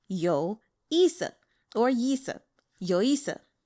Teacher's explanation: So 有, that's the fourth tone, the third tone, that vocal fry, 有. And then both yi and se are the fourth tone, so down